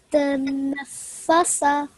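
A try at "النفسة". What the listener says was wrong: The nafasa. Okay, when you first read it, you mixed the sin and the fa. You swapped them around.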